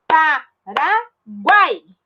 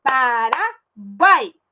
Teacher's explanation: O U, o A e o I fala tudo junto, numa sílaba só. Junto com o G fica guai. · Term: Tritongo